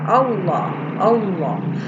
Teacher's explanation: percaya Allah ini lamjalalah ya sebelumnya berharokat fathah maka dibaca lemnya lam tafkhim dibaca tebal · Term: lam tafhim